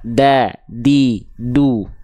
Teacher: Jadi huruf dal itu dilafalkan sama persis seperti kita melafalkan huruf ta dan huruf po. Cuma bedanya dal itu tipis dan dia tidak ada percikan nafas seperti huruf ta.